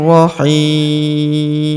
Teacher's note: Karena di depan huruf hi terdapat ya sukun sebelum huruf pemberhentian. Dan huruf pemberhentian huruf nun tanwin un ini kita sukunkan atau kita matikan